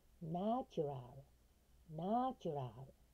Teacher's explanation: これアクセントはナーに行きます。